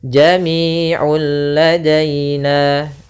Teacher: Dan di sini juga dinamakan dengan idgham kamil, yang artinya langsung hilang seluruhnya suara nunnya sehingga langsung masuk kepada huruf lam. Nah, di sini bila gunnah artinya tidak disertai dengan namanya gunnah, sehingga langsung saja jami'ul ladaina.